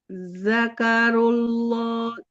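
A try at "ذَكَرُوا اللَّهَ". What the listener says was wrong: Jadi jangan da ya, tapi za. Ujung lidahnya ke ujung gigi seri atas.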